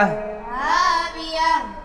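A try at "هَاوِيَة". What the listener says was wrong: हा की आवाज़ सही से आए।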